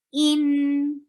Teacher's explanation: clear medium flow of sound on noon.